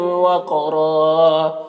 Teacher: قاف کو پر پڑھیں گے، حروف مستعلیہ میں سے ہے اور قاف میں قلقلہ کریں گے، اور را کو یہاں پر پر پڑھیں گے اور وقف کی صورت میں ایک زبر کے ساتھ الف پڑھیں گے، اس طرح سے۔